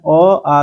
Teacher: अ आ का उच्चारण स्थान कंठी होता है